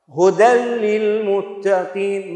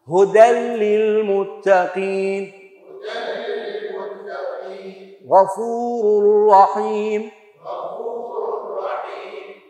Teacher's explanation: نون ساكنة زائد لام أو راء يساوي إدغام كامل بلا غنة